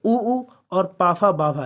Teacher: जब भी कभी होंठ मिलते हैं तो उनका उच्चारण स्थान तो होंठ यानी कि ओष्ठ के द्वारा ही होता है।